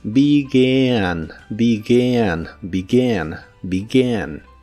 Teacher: Aquí también la E se pronuncia como I, pero la A no es la A normal, sino que es una combinación de los sonidos E y A